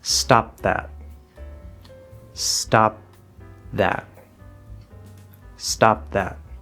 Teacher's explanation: Again, we hear the V, we hear the S, and there's a clear separation between them. Even though there's not a stop in the sound, we clearly hear both sounds individually.